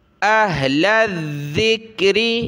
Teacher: اہل الذکر، حمزہ ہا زبر لام کو ذال کے ساتھ ملایا، ذال پر زبان نکالیں گے اور سخت کریں گے تشدید کی وجہ سے ، پھر ذال کو کاف کے ساتھ ملایا، لام ذال زبر